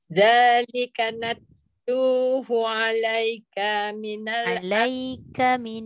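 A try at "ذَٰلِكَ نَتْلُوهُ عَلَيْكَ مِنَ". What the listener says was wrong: jangan panjangkan ka.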